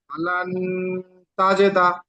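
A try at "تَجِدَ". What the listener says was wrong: তাজে নয়, তাজে বললে এখানে একার হয়ে যাচ্ছে। জিমজের জি, জি তাজি। অক্ষরের টান একটু ছেড়ে গিয়েছে। জিম জের জি, দাল জাবার দা, তাজিদা।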